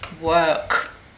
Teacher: the post-alveolar R, as in work, in terms of the RP · the phoneme r can have several realizations so this one would be the post alveolar r as in work